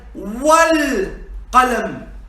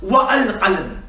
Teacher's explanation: And that's why we said wal-qalam and not wa-al-qalam. Because the hamzatul wasl, it is not pronounced if it comes in the middle of the sentence. It is only pronounced at the beginning.